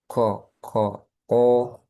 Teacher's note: Nah, kofnya ya. Kofnya jangan ada udara.